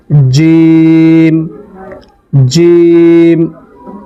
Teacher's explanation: একটু শক্ত করে জিহ্বার মধ্যখান এবং তার বরাবর উপরের তালুর সঙ্গে লাগিয়ে এটা পড়তে হয়